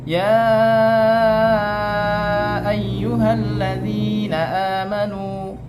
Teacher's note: mad jaiz itu menyebutnya 2,5 alif